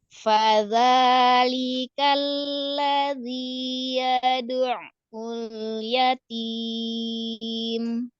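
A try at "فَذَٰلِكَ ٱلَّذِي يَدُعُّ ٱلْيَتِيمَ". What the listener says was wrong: Ya, seperti itu lebih baik ya.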